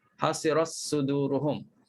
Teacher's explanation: Ta hasirat, ta pada kalimah hasirat dimasukkan dalam sad suduruhum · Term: idgham saghir